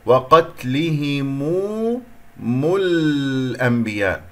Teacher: انتقلت من الميم المضمومة إلى اللام القمرية